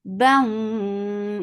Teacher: For kasra, give e sound. Bam idgham with gunna. So keep the sound in your nose for a longer time.